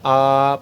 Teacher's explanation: विवत क्या होता है आपका पूरा मुह खुला हुआ